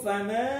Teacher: ma fathah diikuti alif, panjang 2 harokat